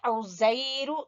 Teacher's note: عین کو وسط حلق سے